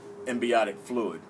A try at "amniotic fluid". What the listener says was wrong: Amniotic, no B in there.